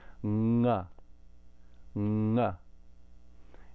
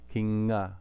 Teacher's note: Nasal is very simple, just what the tongue naturally makes if you hold it there in that position. So in the guttural position, this is the hardest one, it goes nga, nga. It's very easy to think if you just think of ng sound.